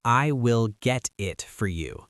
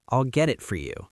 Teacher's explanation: The T becomes a glottle stop. Your throat closes slightly instead of making a hard T sound.